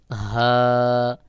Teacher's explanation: হা হলকের শুরু থেকে বাহিরের দিকে বাতাস বের হয়ে একেবার খোলাভাবে আওয়াজটা বের হবে। যেমন হা, গলার মধ্যে কোথাও যেন বেঁধে না যায়, কোথাও যেন চাপ না থাকে, একেবার ফাঁকা আওয়াজ হয়ে বের হবে।